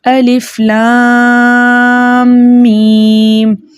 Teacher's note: تو لام کے اوپر مد لازم حرفی مثقل بن رہی ہے، اس لیے یہاں پر ہم لام کو 6 حرکت کی مقدار کھینچ کر پڑھیں گے۔ میم پر مد بن رہی ہے مد لازم حرفی مخفف، وہ اس لیے مد کے معنی ہے کھینچنا، لمبا کرنا، دراز کرنا۔